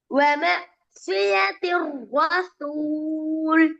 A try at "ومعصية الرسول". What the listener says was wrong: லைட்டா வந்துக்குது நிறைய வரணும் சுவாது சொல்லுங்க பாபம் சுய் இல்ல திருப்பி சொல்லுங்க வருது இல்ல முதல்ல நீ சுய சொல்லுங்க சுய்